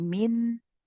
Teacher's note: we don't say Min and stop all of a sudden we say Min you see how I stay on the noon for a bit